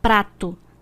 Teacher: No encontro consonantal, as duas letras possuem fonemas distintos, ou seja, ao falarmos podemos notar que o som de ambas é emitido. Prato, dá para percebermos que o som do P e do R são pronunciados separadamente.